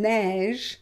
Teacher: So neige, we pronounce it e, open, neige. Pen, pen, it's open, and after we close with the consonant.